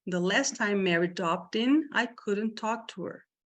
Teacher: Você pode não falar esse K, você só faz o corte no formato do K.